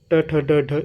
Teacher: ट ठ ड ढ यह सारे मुर्धन्य है